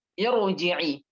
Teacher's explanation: Walaupun berharakat kasroh, selagi itu hamzah wasal, maka ra ini akan dibaca tebal.